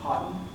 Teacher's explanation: First, the syllabic N in cotton for cottonwood. So there's no vowel between the T and the N.